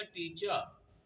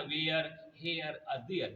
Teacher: आखिर में श्वास साउंड अदा करेगा, आर नहीं पड़ेगा